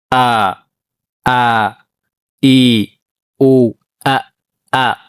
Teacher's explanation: ሐምዛ የምትወጣው ከአቅሰል ሐልቅ ነው። ከአቅሰል ሐልቅ ማለት ከደረታችን በኩል ካለው ጉሮሯችን የሚጀምርበት ከታች እንደ ጉሬ